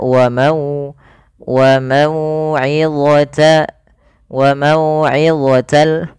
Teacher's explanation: Maka cara membacanya sempurnakan daripada makharjul huruf wau dengan memonyongkan bibir kita